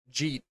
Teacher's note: instead of asking did you have food, people ask Jeet, it's all one word.